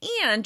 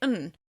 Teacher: Instead of saying and, and you're going to say /n/. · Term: weak forms